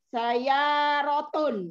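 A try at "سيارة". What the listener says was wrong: Untuk kata sebelum terakhir ada tasdid di ya-nya, coba. Di atas sa'ah. Di atas sa'ah. Bukan, di atasnya kata di atas sa'ah itu ada yang bertasdid.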